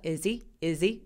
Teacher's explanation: he는 대명사라서 h 소리를 열심히 안 내요.